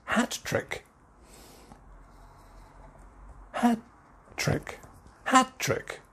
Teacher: typically hat trick stress on the first syllable